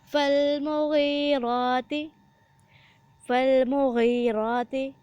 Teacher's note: غائن کے ساتھ یا ہے، اس کو 1 الف کے برابر لمبا کیا جائے گا اور غائن کو موٹا پڑھا جائے گا